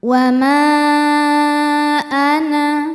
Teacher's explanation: Kemudian hamzahnya adalah a, ini berada di kata kedua yaitu ana. Cara bacanya, mim ini dipanjangkan boleh 4 boleh 5 harokat. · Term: mad jaiz munfasil